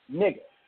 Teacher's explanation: Voice that slightly stretches the first syllable.